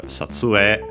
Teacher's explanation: Most pronounce it now as long E. Some still A.